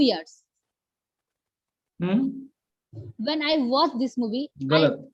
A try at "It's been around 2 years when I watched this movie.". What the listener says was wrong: गलत। पूरा एक सांस में बोला जाएगा। It's been around 2 years when I watched this movie. ये पूरा एक लाइन है।